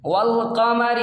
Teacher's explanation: الف کو نہیں پڑھیں گے، ڈائریکٹ لام میں ملائیں گے